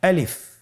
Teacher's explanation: আমি যখন আলিফ বলছি এর মধ্যে কোনো টান হবে না, আলিফ। আবার বলুন আলিফ।